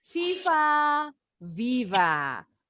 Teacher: kalian baca huruf hijaiyah FA k f huruf v juga sama Gigi atas menyentuh bibir bawah tapi pita suaranya harus bergetar kalau huruf F ini nggak ada getarannya Jadi kalau huruf F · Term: bunyi V